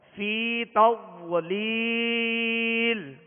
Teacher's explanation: ألم تر كيف فعل ربك بأصحاب الفيل ألم يجعل كيدهم في تضليل في تضليل، اس کو آواز اتنی جنبش نہ آئے، آواز ہلے نہیں، کیونکہ سکون کو جمع اور مضبوطی کے ساتھ ادا کرنا ہوتا ہے، تو ضاد میں قلقلہ پیدا نہ ہو، آواز لوٹتی ہوئی محسوس نہ ہو، آواز میں حرکت پیدا نہ ہو، آواز میں جنبش نہ ہو۔